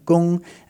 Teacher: the gong is pronounced in the first tone so that's that high level tone